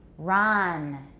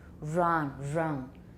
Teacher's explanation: a student who pronounce all her initial R's is wrong wrong we don't have friction in English we've got rounding